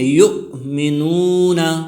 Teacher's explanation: یؤمنون میں واو مدہ ہے، واو ساکن سے پہلے نون پر پیش آئے ہیں، تو اس کو واو مدہ کہتے ہیں، اس کو ایک الف کی مقدار کھینچ کر پڑھیں گے